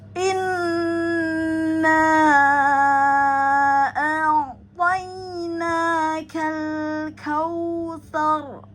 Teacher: Nah, kemudian pada ka ada hamzah wasal alif lam sukun, maka terbaca jelas ya, maka lanjut atau langsung masuk ke kal ya. Kal pada ka ada hamas, keluarkan pada ka, pangkal lidah depan kof, maka dia ada hamas ya.